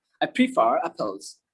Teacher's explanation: আরটা কিন্তু পুরোপুরি উচ্চারণ হইলো না, আমি ভিতরে মুখের মধ্যে রাখছি